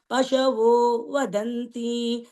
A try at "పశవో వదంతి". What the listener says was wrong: పశవో పశవో దీర్ఘం ఉంది చూడు పశవో వదంతి